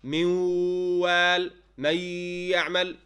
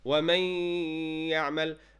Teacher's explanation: So you should not say wa may ya'mal, and neither wa may. You should show the full ghunna in your nasal passage